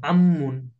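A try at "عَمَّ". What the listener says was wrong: আইনের উচ্চারণ আরেকটু স্ট্রং করা চাই। কণ্ঠে চাপ হয় না আপনার? হ্যাঁ, হা উচ্চারণ করেন তো, হা। আইন, আইনকে আরেকটু চাপ দিই। আপনি এই হরফের উচ্চারণগুলো আরো খেয়াল করতে হবে।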